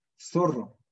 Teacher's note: Interdental. La lengua se ubica entre los dientes.